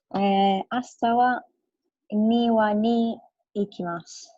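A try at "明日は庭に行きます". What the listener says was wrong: Good. Okay. Ashita wa niwa ni ikimasu. Excellent.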